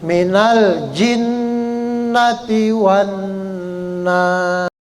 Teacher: nun yang bertasdid harus dibaca gunnah, dengung ya